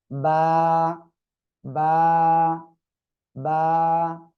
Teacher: এক আলিফ টেনে পড়তে হবে, দুই ঠোঁটের ভিজা অংশ থেকে উচ্চারণ হবে।